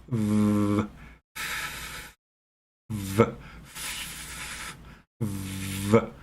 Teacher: you use your vocal cords, it becomes v, v, v.